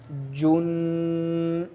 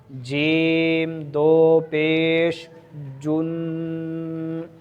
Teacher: آواز آخر میں ناک میں جانی چاہیے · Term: تنوین